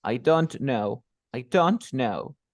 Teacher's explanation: Empiezo con I, abajo. El don't, sube. I don't. El no, queda ahí, ¿sí o no?